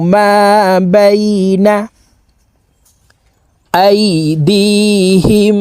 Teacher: আইন হরফকে হালুকের মধ্যখান থেকে চাপ দিয়ে উচ্চারণ করতে হবে কারণ আইনের মাখরাজ হালুকের মধ্যখান থেকে হবে মা বাইনা আইদিহিম ওয়ামা